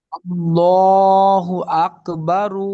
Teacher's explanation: আল্লাহ শব্দের তাসদিদের ডানে যখন জবর অথবা পেশ হয় আল্লাহ শব্দের লামকে, তখন পুর বা মোটা করে পড়তে হয়।